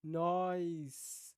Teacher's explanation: ao invés de dizer nós teremos ali um passo intermediário, que seria, então, a semivogal I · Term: ditongação